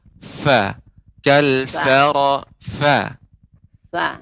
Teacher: Dia bibir bawah bertemu dengan gigi seri atas. · Untuk huruf fa, Ibu, lebih ditambahkan lagi hamesnya juga, aliran udara.